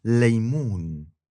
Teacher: First, we talked about l as in laymoon, which is an L made with only the tip of your tongue. The back goes down. And that is the normal L you're going to be using throughout Arabic.